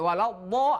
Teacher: Lo itu adalah tempatnya di pinggir lidah kita, posisinya di pinggir geraham atas atau geraham atas kanan atau kiri ataupun tengah ke langit-langit.